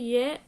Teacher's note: य के उच्चारण में जीवा का ऊपरी भाग कठोर तालु के पास आता है और व्य के उच्चारण में दोनों अधर पास आते हैं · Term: अर्धस्वर